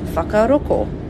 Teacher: Ngai Tahu or Kaitahu speakers change the ng sound into a K sound, and it becomes whakaroko.